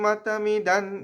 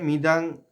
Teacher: আছে যুক্ত আছে তারপরে মাতামিদান এখানে যে অনুস্বরটা আছে মিদাং অনস্বরটা এই অং এর উচ্চারণ অং করবো না আমরা এখানে দন্ত ন এর উচ্চারণ নেব